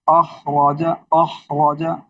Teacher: اس میں خا بھی موٹا ہے را بھی موٹا ہے